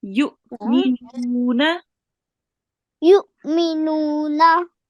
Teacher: we do the soft jerk on the hamza with the sukoon sign